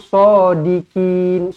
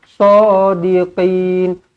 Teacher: Huruf qaf bukan huruf kaf. Bukan sodikin, tetapi sodiqin.